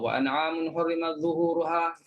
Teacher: kadang-kadang kalau baca laju sangat ta tu tenggelam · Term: ta mati